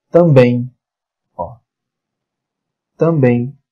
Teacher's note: qual é a sílaba tônica de também bem essa mais forte